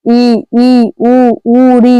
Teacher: जिन स्वरों के उच्चारण में मुख द्वार लगभग बंद रहता है उसको संवृत स्वर कहते हैं।